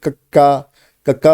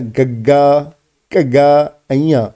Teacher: ਜਿਨ੍ਹਾਂ ਧੁਨੀਆਂ ਦੇ ਉਚਾਰਨ ਸਮੇਂ ਜੀਭ ਦਾ ਪਿਛਲਾ ਹਿੱਸਾ ਕੋਮਲ ਤਾਲੂ ਨਾਲ ਲੱਗੇ, ਉਹ ਕੰਠੀ ਵਿਅੰਜਨ ਹੁੰਦੇ ਹਨ।